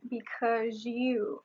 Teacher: the final | z | in because becomes | ʒ | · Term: assimilation